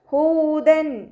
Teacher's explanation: തെൻവീനിലുള്ള നൂനിനെ വ്യക്തമാക്കി മണിക്കാതെ ഉച്ചരിക്കുക കേട്ടോ. ഹൂദൻ.